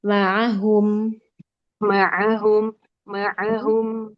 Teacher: Tawasud itu sandaran makhrajnya dia tidak terlalu kuat ya. Enggak juga terlalu lemah. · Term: huruf ain